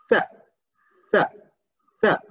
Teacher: So the tongue touches the upper teeth